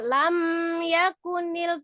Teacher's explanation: karena secara sifat huruf mim itu memiliki sifat runnah Ya maksudnya dengan Bertemunya dua bibir jadi sempurna ya diketemukan kedua bibirnya tetapi dengan tidak ditahan sempurna jadi tidak perlu dibanting untuk mim sukunnya lam yakunil tidak ya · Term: izhar syafawi